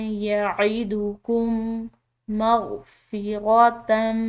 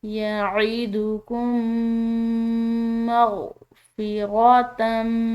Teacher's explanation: तो जहाँ पर भी ऐसा हो कि पहला मीम साकिन हो दूसरा मीम मुशद्दिद हो तो उन दोनों मीम को आपस में मिलाकर आपस में मुद्गम करके पढ़ा जाता है